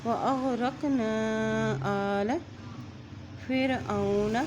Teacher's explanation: نون کے اوپر مد ہونے کی صورت میں اس کو لمبا کر رہے ہیں